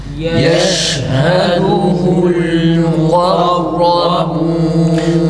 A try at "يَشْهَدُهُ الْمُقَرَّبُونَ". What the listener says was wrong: Ra'da acele etmeyelim arkadaşlar. Ra'nın şiddeti tam okunsun. Tekrir sıfatına dikkat edin. Şiddeyi okurken Ra o anda okunsun.